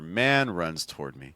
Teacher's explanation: I think we have to go lower on me. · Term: lower pitch